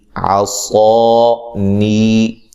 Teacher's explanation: صاد کو خوب موٹا کر کے ادا کرنا ہے